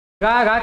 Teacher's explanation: ग घ किसके हैं क वर्ग के हैं इनका उच्चारण स्थान कंठ है